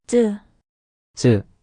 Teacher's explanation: You make the same sound as chu, but with more tension in your throat. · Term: tense consonants